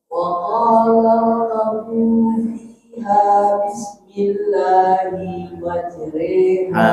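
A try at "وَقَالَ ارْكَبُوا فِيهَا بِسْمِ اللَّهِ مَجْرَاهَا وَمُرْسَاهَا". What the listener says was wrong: Hinya masih gantung. Hinya jangan terlalu panjang. Bismillahi, bukan itu tapi bismillahi langsung.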